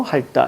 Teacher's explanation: 티읕이 탈락하고, 자, 그 다음에 리을 남아서 할따, 이렇게 가는 겁니다. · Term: 자음군 단순화